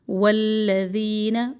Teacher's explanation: ذی کو زی نہ پڑے. ذین، زبان کی نوک کو نرمی سے اوپر والے 2 دانتوں کے کناروں سے لگائے. · واو کو فوراً لام تشدید سے ملانا ہے. ہونٹوں کو گول کرے واو پر.